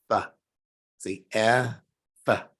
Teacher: your bottom lip has to go up to touch the bottom of your 2 top front teeth to say F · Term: labial